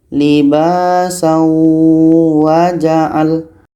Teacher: Kita dengungkan. Bunyi tanwin ini masuk ke huruf waw. Kita dengungkan dua harakat. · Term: idgham bi gunnah